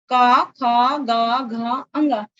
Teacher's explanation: पहला वर्ग का वर्ग, जिसमें 5 व्यंजन है, का, खा, गा, घा, अंगा। ये चारों ही व्यंजन बोलने के आधार पे, मुख के उच्चारण के आधार पर आप देखिए कंठ से निकल रहे हैं, इसीलिए एक ही जगह से निकल रहे हैं ये 5 ध्वनियां, इसलिए इनको कहा जाता है कंठ।